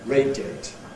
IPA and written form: ˈreɪdjeɪt (radiate)